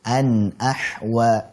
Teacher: Faja'alahu ghutha'an ahwa Ini izhar halqi an. Dialirkan sedikit karena memiliki sifat tawassut atau bainiyah